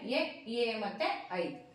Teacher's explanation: ಕಂಠ್ಯ ಮತ್ತು ತಾಲವ್ಯ ಎರಡು ಕೂಡ ಜೊತೆಯಾಗಿ ಭಾಗವಹಿಸಿ ಉತ್ಪತ್ತಿ ಮಾಡುವಂತ ಅಕ್ಷರಗಳು